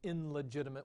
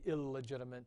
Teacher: English also does assimilation so we don't say in legitimate we say illegitimate